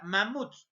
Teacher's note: la mayor fuerza de voz está en la última sílaba pero esta última sílaba está termina en dos consonantes a pesar